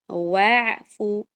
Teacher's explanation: واو بھی باریک ہے، آئین بھی باریک ہے · واعف میں آئین کا خیال رکھیں، وافو نہیں بولنا آپ نے، نہ وافو بولنا ہے.